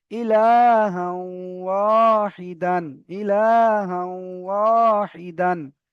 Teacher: হায়ের উপরে দু জাবার তানবিন, তানবিনের পরে ওয়াও এসেছে, তাই তানবিনকে ওয়াও এর সাথে মিলিয়ে একালি পরিমাণ গুণনা করে পড়তে হবে। একে ঈদগামে নাকিস বলে।